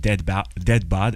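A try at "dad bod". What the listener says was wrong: Stop saying it like dead bod. It's not dead. not Dad.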